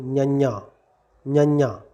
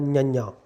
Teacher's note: ਨੱਕ ਦੇ ਰਾਹੀਂ ਆਵਾਜ਼ ਬਾਹਰ ਕੱਢ ਕੇ ਨਿਆਂ ਨਿਆਂ। ਨੱਕ ਰਾਹੀਂ ਆਵਾਜ਼ ਬਾਹਰ ਕੱਢ ਦੇਣੀ ਹੈ